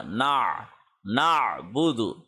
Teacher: نون کو عین کے ساتھ جوڑنا ہے، عین حلق کے درمیان سے ادا ہوگا